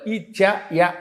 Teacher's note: ఇచు యశానాం తాలుహు, తాళవ్యంతో పలకాలి